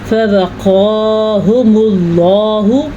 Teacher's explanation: فوقاهم الله شر ذلك اليوم ولقاهم نظرة وسرورا فوقاهم اللہ، یہ ہے موٹا قاف اور یہ حروف مصالیہ میں شامل ہے، اسے ہم پر پڑھیں گے۔ یہ ہے اللہ کا نام اور اللہ کے نام سے پہلے پیش ہے تو اللہ کا نام پر پڑھیں گے۔